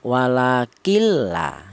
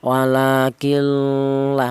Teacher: tidak ada dengungnya langsung nunnya masuk ke huruf lam tanpa ada suara berdengung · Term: idgham bila ghunah